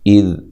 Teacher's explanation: اذ حمزہ کو تحقیق سے ادا کرنا ہے، ذال کو نرم ادا کرنا ہے، ذال کو ہلانا نہیں ہے